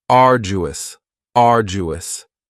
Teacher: Next is arduous, and arduous has 3 syllables, and the stress is on the first syllable, arduous. Now, you don't hear that D sound that much. It's not very strong. It almost sounds a little like a J.